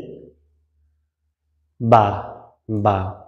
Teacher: দুই ঠোটের ভিজা জায়গা হতে বা